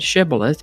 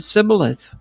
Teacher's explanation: The Gileadites pronounced the word with the sh sound shibilith. But the Ephromites pronounced it cibilith without the sh sound.